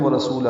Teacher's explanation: ورسولہ ملائیں گے تو ورسولہ الٹا پیش مد صلہ ہے، یہ دو حرکات لمبا کرنا پڑے گا